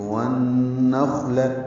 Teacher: لام کو جلدی اور باریک پڑھنا ہے · ون نون کو خا سے ملائیں گے، خا ساکن پہ ہمس ہوگا. نخ ہلکی سی سانس کی آواز جاری رہے گی